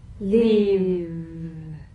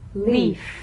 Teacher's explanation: If you don't have enough vibration in your V's, they'll end up sounding like the F